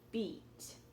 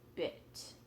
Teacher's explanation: E, no roundness, right? Tight and stretched. I, bit more round, less stretched.